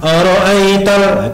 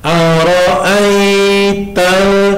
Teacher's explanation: ada ra'aita, itu namanya mad layin, dibaca dua ketukan. Tidak boleh kita ar-ra'aital, kurang panjang.